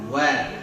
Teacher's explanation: Wa dimonyongkan. Wa saat awalnya dimonyongkan, habis itu disenyumkan seperti sebagaimana huruf yang lainnya, huruf tipis. Wa monyong di awal saja.